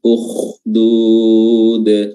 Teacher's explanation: Ukhdud huruf kha-nya juga memiliki sifat tebal, ukhdud.